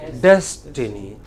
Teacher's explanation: des is given prominence